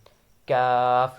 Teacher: जब जुबान की जड़ तालों के सख्त हिस्से से लगे। काफ यह बारीक है · جب زبان کی جڑ تالوں کے سخت حصے سے لگے۔ کاف یہ باریک ہے، کاف۔